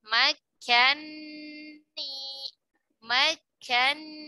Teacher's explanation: nun yang pertama yang berharakat fathah itu diidghamkan ke huruf nun yang kedua yang berharakat kasrah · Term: Idgham kabir